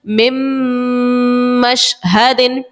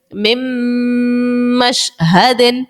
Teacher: آپ ناک میں آواز لے کے جا رہے ہو، ناک میں آپ کی آواز جو ہے وہ گونج رہی ہے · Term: غنہ